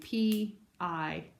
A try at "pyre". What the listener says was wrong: Yeah, exactly.